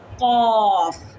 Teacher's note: جو ہمارا لحاظ ہے اور زبان کی جو جڑ ہے اس کو آپس میں ملانے سے ادا ہوتا ہے قوف. کوف نہیں، قوف.